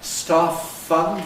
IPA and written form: ˈstɑːf fʌnd (staff fund)